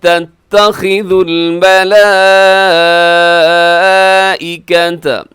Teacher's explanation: ملائکۃ یہاں بڑی مد ہے، اسے بھی 4 سیکنڈ تک لمبا کیجیے گا